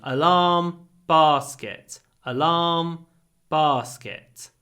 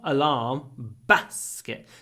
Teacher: so in the South the sound in alarm and the sound in basket is the same sound